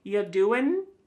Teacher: Listen to that G at the end. Ya doing, it's gone.